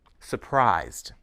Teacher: notice that the second s in Surprise is pronounced as voiced Z